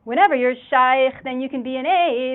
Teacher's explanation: we also have the chanting intonation, and we have the release of word final T and the devoicing of final D, the gut instead of good.